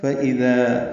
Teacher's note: ذال نرمی سے ادا کریں گے، ذال الف مدہ دو حرکات لمبا بھی کریں گے